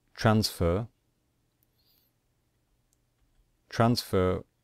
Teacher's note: Transfer, we stress the first syllable.